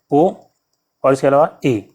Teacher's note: अर्ध समृत ओ और ए के बोलेंगे तो जरा सा खुलेगा, समृत की अपेक्षा थोड़ा सा ज़्यादा खुलेगा।